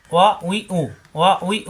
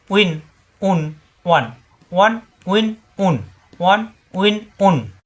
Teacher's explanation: ওয়াও, জবর আসলে ওয়া, উই, উ, ওয়া উই উ, ওয়া উই উ। 2 ঠোঁট থেকে উচ্চারণ, 2 ঠোঁট মিলবে না। উইন, উন, ওয়ান, ওয়ান উইন উন, ওয়ান উইন উন।